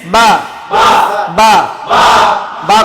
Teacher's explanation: দুই ঠোঁটে কয় হরফ বা